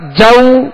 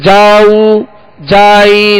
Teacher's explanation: लेकिन इस तरह भी बाज लोग पढ़ते हैं जैसे जाऊ जाई, तो जीम जो जबर है वो खींच जाता है, दराज हो जाता है